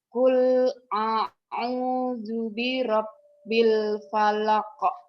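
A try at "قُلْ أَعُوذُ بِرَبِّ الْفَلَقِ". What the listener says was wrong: Jangan ditekan di bi-nya. Nih ya. Kul a'udzu birab. A'udzu birab. B-nya dipendekin. Qul a'udzu birab. Qul a'udzu birabbil falaq. B-nya jangan ditahan, dilepas. Sebetulnya itu udah kalau biasa mah udah bener. Cuman kan saya pengen yang sempurna ya.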